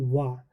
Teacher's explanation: जब आप बोलोगे वा तो दांत और ओष्ठ दोनों की आवश्यकता हो रही है सर, तो वहाँ पर वा के उच्चारण स्थान के लिए आपका दंत ओष्ठ हो जाएगा।